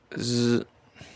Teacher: It is a voiced alveolar fricative sound. It is pronounced with the tongue tip or blade near the alveolar ridge to create a narrow channel for turbulent airflow, while the vocal cords vibrate to create a buzzing sound.